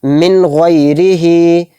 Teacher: نون کو ظاہر کر کے بلا غنہ کے جلد پڑھیں گے، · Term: اظہار